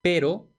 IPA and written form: ˈpeɾo (pero)